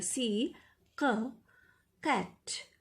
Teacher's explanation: ये क वो वाला क पूरा क नहीं है, ख मिक्स गले से बोलेंगे.